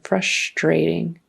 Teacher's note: that TR kind of becomes like a CHR most of the time.